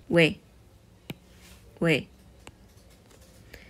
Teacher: Y por último, esta no tiene mucho sentido, porque es la O y la I, pero no suena como una OI, sino como una OE.